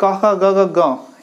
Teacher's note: क वाले पूरे, क, ख, ग, घ, ग, ये कंठ से बोले जाते हैं